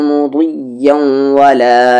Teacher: اور یہاں پر مضیّوں میں تنوین کے بعد واو ہے تو ادغام بدغنہ ہوگا